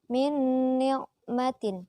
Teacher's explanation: Di situ ada nun mati bertemu dengan huruf nun, maka dibaca idgham atau berdengung. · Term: idgham bi gunnah